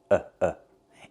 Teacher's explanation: the a makes the uh sound like cup and up. It's closed and relaxed.